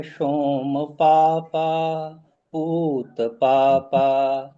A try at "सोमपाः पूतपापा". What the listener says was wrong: नहीं है, सोम पापा नहीं है, सोम पाहा।